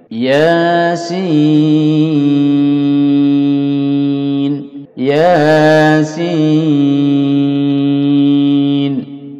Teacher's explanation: Ya dipanjangkan dua harokat saja. Untuk sin dipanjangkan sampai 6 harokat.